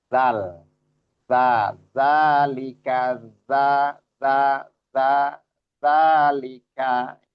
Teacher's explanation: adanya di ujung lidah bertemu dengan ujung gigi seri atas · makhraj nya itu ujung lidah kita keluar sedikit bertemu dengan ujung-ujung gigi seri atas. Dia satu makhraj dengan huruf sa terus huruf d makhraj. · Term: zal